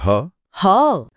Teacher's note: सबसे पहले है काकल्य व्यंजन जो है ह ह। वहां से उच्चारित होता है। काकल यानी हमारे स्वर यंत्र या लेरिंग्स का सबसे निचला हिस्सा।